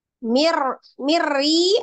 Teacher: tanwin ketemu dengan huruf ro dan lam hukumnya idgham bila ghunah jadi diidghamkan ditasdid dilebur ke huruf ro tapi tidak disertai dengan dengung